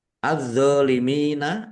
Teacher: alif lam syamsiyah karena tidak dibaca langsung masuk ke huruf berikutnya